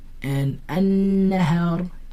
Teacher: did I pronounce the lam? No, I didn't pronounce the lam. Why? Because the lam is silent. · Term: lam ash-shamsiyya